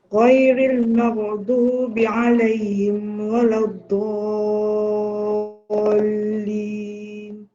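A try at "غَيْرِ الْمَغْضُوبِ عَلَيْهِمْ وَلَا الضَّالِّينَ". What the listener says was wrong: Ghairi betul. Okay, tapi maghdu tu kena perbaiki. Okey, maghdu. cuba sebut maghrib. Kena main kat situ. Maghrib, maghribi, maghrib, maghdu. Cuba sebut macam tu Cuba nak perbaiki huruf ghin.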